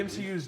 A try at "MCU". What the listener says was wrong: MCU. You said T. You said T.